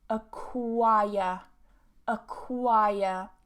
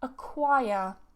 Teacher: And again, we're British, so we don't pronounce that R because we have a vowel before it. So normally, as I've repeated a million times, but I know some of you guys are new, If you have a vowel and an R together in the same syllable in British English, we don't pronounce that R.